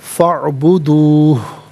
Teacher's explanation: हा की आवाज़ वक्फ़ की सूरत में आएगी लेकिन सुकून के साथ, यानी हा साकिन होगा